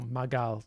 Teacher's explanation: We have voicing of obstruents in intervocalic position.